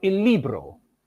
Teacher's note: All these forms start with a lateral consonant L. Then we have an unrounded high front vowel E which in some languages may be lengthened in others it is short.